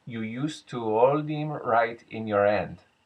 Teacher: the dropped H at the beginning of a word